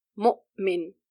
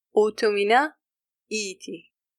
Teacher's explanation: Notice how the Hamza is cutting the word into two parts.